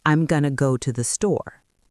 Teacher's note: a native speaker reduces going to into gonna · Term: reductions